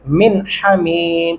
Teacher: यहाँ पे गुन्ना नहीं हो सकता क्योंकि आगे हरूफ हल्की में से हा आ चुका है, इसलिए जहाँ भी हरूफ हल्की 6 हैं वो जहाँ भी आएंगे उनसे पहले किसी भी लफ्ज़ के ऊपर नून है या दो ज़बर दो ज़ेर दो पेश है तो उनके ऊपर गुन्ना नहीं होगा, ये आपने ख़ास ध्यान रखना है कानून का।